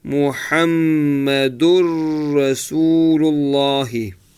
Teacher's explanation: So you incorporate fully the noon into the ra. This is called complete merging.